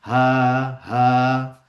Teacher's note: আপনি যখন হ্যালো বলেন তখন দেখেন আপনার যে বাতাসটা বের হয়ে আসছে একদম ভিতর থেকে, আপনার থ্রোটের একদম ভিতর থেকে সাউন্ডটা বের হয়ে যাচ্ছে, সা করে বের হয়ে যাচ্ছে, কোথাও আটকাচ্ছে না · আপনার গলার একদম ভিতর থেকে বের হয়ে আসছে সাউন্ডটা